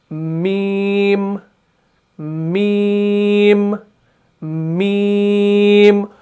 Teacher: ऊपर वाले होंठ का खुश्क हिस्सा और निचले वाले होंठ का खुश्क हिस्सा, जब ये आपस में पूरी तरीके से चिपक जाते हैं तब जाके हरफ मीम अदा होता है।